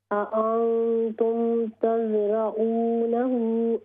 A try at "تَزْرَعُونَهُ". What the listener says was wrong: ہاں جی، اس ہا کو لمبا کریں گے ہم چونکہ اس پر مد آ رہی ہے. تز تا ہے نا، تو اس کو ہم پڑھیں گے تزرعونه أم نحن.